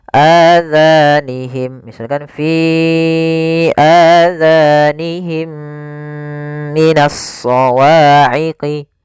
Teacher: suara mim yang pertama masukkan kepada mim kedua dan ditahan. Masukkan mim kedua, ditahan suara gunnahnya.